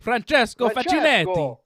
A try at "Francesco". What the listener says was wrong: Francesco. You gotta roll that R a little bit, you know? Francesco.